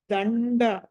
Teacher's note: దండ ద తర్వాత అనుస్వారం ఉంది, తర్వాత డ ఉంది కాబట్టి డ పంచమాక్షరము ణ రావాలి.